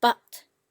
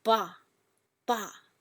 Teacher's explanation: the fourth tone is when your voice goes down from highest to lowest